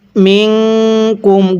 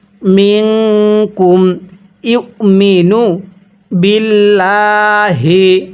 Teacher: মিনকুম গুনাহ করবেন, নাকের বাঁশির দ্বারা গুনাহ করবেন